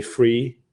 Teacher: So something like three is a very hard sound to say. A lot of Danish people will take the easy way out and just say free.